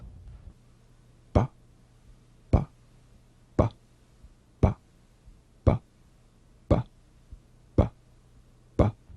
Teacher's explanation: voiced labial stop or plosive consonant a drumbeat staccato consonant close the lips together gently and let them spring apart lightly · close the lips together gently and let them spring apart lightly play this on the springing away from contact not by pressing the lips together you'll feel a gentle voiced pulsation on the lips like a